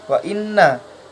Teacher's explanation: Di sini nunnya dibaca gunnah karena nunnya bertasdid.